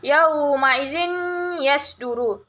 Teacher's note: idgham bigunah karena ada huruf kasratin bertemu dengan huruf ya, cara membacanya masuk dengan mendengung